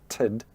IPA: təd